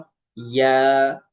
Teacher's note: জিহ্বার মধ্যখান তার বরাবর উপরে তালের সঙ্গে লাগিয়ে উচ্চারিত হয় ইয়া।